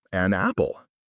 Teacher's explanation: The N links to the A. It sounds like an apple.